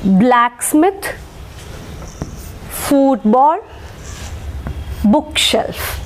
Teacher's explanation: we will Mark stress on the first syllable